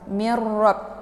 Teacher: Ini merupakan idgham bila gunnah. Jadi memasukkan bunyi nunnya ke dalam bunyi ra tanpa dengan suara yang mendengung.